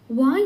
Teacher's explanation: ಹಲ್ಲು ದಂತ ಮತ್ತು ತುಟಿ ಓಷ್ಟ ಗಳೆರಡರ ಸಹಾಯದಿಂದ ಹುಟ್ಟುತ್ತಾದ್ದರಿಂದ ಇದು ದಂತೋಷ್ಠಿಯ ವರ್ಣವೆನಿಸುವುದು